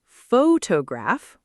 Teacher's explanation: Photograph with clear stress on the first syllable